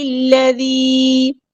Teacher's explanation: لام کو لام کے ساتھ ملا دینا ہے، حمزۃ الوصل ہمارا ڈراپ ہو جائے گا ، ذال کو باریک نرمی سے ادا کرنا ہے، لائٹ لیٹر